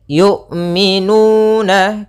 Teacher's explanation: lafal nuna ada dhammah bertemu waw, yaitu bacaan mad tabi'i, panjangnya 2 harakat